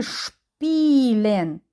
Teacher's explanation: с і п в цьому випадку ми не читаємо с а буде ш